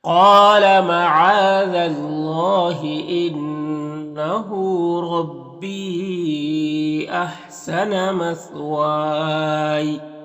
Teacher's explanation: انہ نون مشدد ہے، غنہ ہوگا اور ہاں میں الٹا پیش ہے۔ لام ہے، یہاں پر الف مدہ ہے۔